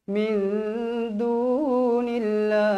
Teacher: Min nun bertemu huruf dal. Wajib dengung 2 harakat.